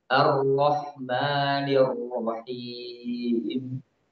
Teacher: Itu terlalu berlebihan dalam menggetarkannya. Ya, yang benar adalah roh itu sedikit suaranya sedikit mengalir. Tidak tertahan juga tidak banyak. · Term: sifat bainiyah